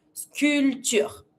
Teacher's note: So you avoid the P and you just pronounce the T.